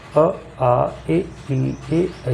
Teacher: ये सब अवृत्ताकार हैं, जिनके उच्चारण में होठों का आकार गोल ना हो